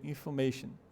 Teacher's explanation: Se escreve com O, mas ela não é pronunciada assim. O som dela tem um schwa ali no lugar do O.